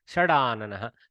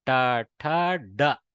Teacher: Softening of the Takara has happened to Dakara.